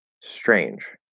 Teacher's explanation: the t position and you push an sh through the t it's very very natural for a native speaker of of american english to start in the s position and as we start transitioning to that ch we'll actually let that sh start coming through before we close the t so it's not that there's an sh and then the t · in the way i say it the the ch is it you start in the t position and you push an sh through the t